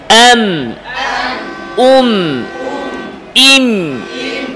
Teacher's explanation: মিমের আওয়াজ নাকে যাবে এম ইম আওয়াজ সামান্য জারি থাকবে এম ইম এম ইম এম ইম আওয়াজ সামান্য জারি এম ইম